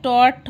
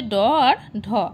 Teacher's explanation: দেখো ট বর্গ বলছে মূর্ধন্য, ট, ঠ, ড, ঢ মূর্ধন্য। এর মধ্যে অঘোষ হচ্ছে ট আর ঠ, আর ঘোষ হচ্ছে ড আর ঢ। অল্প প্রাণ হচ্ছে টর ড, মহাপ্রাণ হচ্ছে ঠর ঢ।